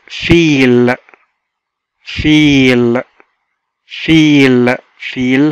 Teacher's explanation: ما بنقولش E واحدة، بنكمل وبنمد في نطق حرف الـ E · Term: long vowels